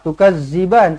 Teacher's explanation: Zal hujung lidah Jangan kasar